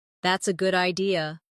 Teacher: If someone says, That's a good idea. Notice how their voice rises at the end.